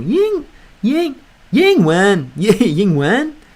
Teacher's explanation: Say ying in a pitch that's higher than usual.